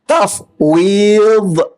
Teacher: Huruf dad ni ialah huruf sepanjang tepi lidah. Bermula daripada pangkal lidah hingga tepi hujung lidah, menekan ke geraham atas. Sama ada kiri atau kanan.